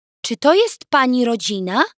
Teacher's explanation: Note the rising intonation of the sentence to indicate that it's a question.